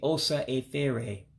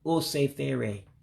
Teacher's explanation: according to my book, you have to drop the A in osa. So you wouldn't say osa efere.